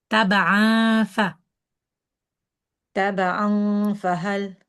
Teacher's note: You don't do the wow. Don't round the lips. Rather, the top teeth need to come down towards the bottom lip without rounding of the lips.